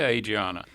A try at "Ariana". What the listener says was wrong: Yeah. The D is silent.